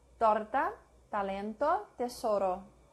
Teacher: Not explosive, with the tip of the tongue against the back of the upper front teeth.